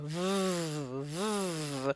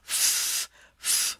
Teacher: V is very much like an F. You bite your lip, only this time you turn your voice on. V, v, so you can hear that vibration as opposed to the quiet vibration of the f, f sound.